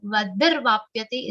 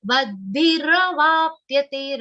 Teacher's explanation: Vadbhiravapyate, ra sound should be complete, va has to be long and has a subtle aghat of pa.